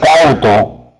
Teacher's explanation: Y en la palabra cauto, profe, usted separa en sílabas y se encuentra con dos sílabas. Donde la A y la U se han encontrado, la vocal abierta A ha recibido la mayor fuerza de voz. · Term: dictongo decreciente, diptongo decreciente